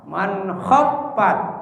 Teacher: Fa-nya ada tasdid. Kalau gitu menahan fa-nya adalah 2 ketukan ya.